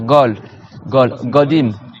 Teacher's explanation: le dialecte des gens de Médine, c'est qu'ils font leur qaf ga